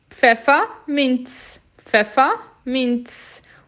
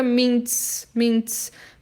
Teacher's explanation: O Z tem som de TS